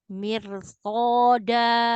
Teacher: Tipiskan mi tipis, sempurnakan kasroh, ro tebal. Mir soda, lepas suaranya.